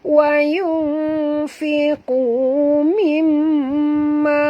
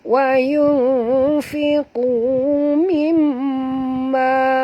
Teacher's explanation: Mimma mim di sini ada tasydid jadi wajib dengung. Mimma mim ni tuan-tuan puan sama panjang dengan ma.